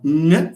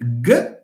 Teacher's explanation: They share everything except the feature nasal. Ng is plus nasal, g is minus nasal. So nasality is an important feature.